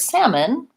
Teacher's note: in North American English salmon has no L sound